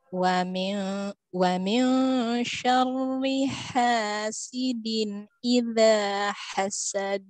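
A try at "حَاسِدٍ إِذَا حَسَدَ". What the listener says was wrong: Nah, hasad. Qalqalahnya kemana?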